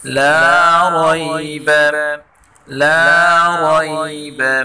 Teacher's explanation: لا کو ایک الف کی برابر کھینچ کر پڑھیں گے، اور را کو پر پڑھیں گے۔